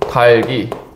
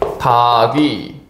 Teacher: 자 그러면 리을 기억 중에서 먼저 리을이 탈락한 거잖아요 이것을 뭐라고 한다 겹받침 탈락 그죠 겹받침 탈락이라고 하죠 자 그다음에 어떻게 된다 다귀 그러니까 그다음에